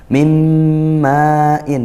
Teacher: nun sukun bertemu mim ya. Tapi seolah kita dengar langsung mim ini idgham bighunnaah. Masuk langsung dan disertai dengung. Maain ini mad wajib muttasil.